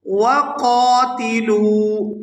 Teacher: قاف کو پورا ادا کرتے ہوئے الف مدہ کی وجہ سے کھینچ کر ادا کریں گے